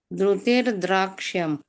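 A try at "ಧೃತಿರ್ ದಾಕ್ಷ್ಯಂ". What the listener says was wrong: ದ್ರ ದ್ರ ಬರಲ್ಲ ದೃತಿರ್ ದಾಕ್ಯಂ ದ ಅಷ್ಟೇ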